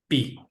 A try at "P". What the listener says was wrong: Okay, no, it's softer. It's P. No, that's Spanish.